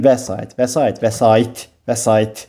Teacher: Vurğu üçüncü hecəyə düşür. İkinci hecəyə düşmür.